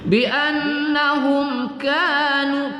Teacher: mim sukun bertemu kaf kita baca tidak berdengung pada izhar syafawi. Bi annahum kanu, ka kita baca satu alif dua harakat, nu kita baca satu alif dua harakat, yak kita baca agak berangin sedikit pada sifat hams pada kaf ya.